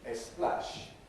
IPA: eˈsplæʃ